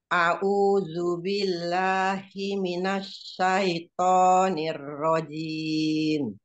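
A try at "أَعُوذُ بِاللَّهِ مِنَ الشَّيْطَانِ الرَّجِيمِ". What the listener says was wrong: Shinnya ya belum tafasinya ya. Jiminash, jiminash, nash, jangan nos, jauh. Jiminash.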